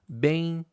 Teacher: Então eles levam você a fechar a boca, né? O movimento ele é de am, que é da mais forte pra mais fraca, é decrescente e é nasal. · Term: ditongo decrescente nasal